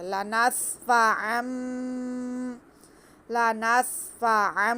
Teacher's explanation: ینتہی، کلا لئن لم ینتہی لنصفعا، لنصفعا، دو زبر ہے، دو زبر کے بعد ہمارے پاس بار ہے، تنوین کے بعد بار ہے تو ہم یہاں پہ اقلاب کریں گے، یعنی کہ ہم تنوین کی آواز کو میم میں بدل کر پڑھیں گے